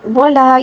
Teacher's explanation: ولا يحض، ولا یہاں پر خالی الف ہے، یعنی لام کے بعد جو ہے خالی الف ہے، اور خالی الف کو الف مدہ کہا جاتا ہے، اور الف مدہ کو تقریباً 1 الف کے برابر کھینچ کر پڑھیں گے